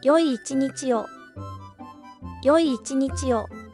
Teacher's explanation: The key to pronouncing this word correctly is to separate the two 'い' sounds.